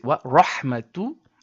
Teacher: wa rahmatun has ha which comes from the middle throat · wa rahmatu has ha, which comes from the middle throat, and this is often confused with the word with the letter ha, which comes from the bottom throat.